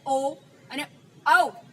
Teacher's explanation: આપણા કંઠ અને હોઠ દ્વારા આ ઉચ્ચારણ થાય છે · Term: કંઠોષ્ઠ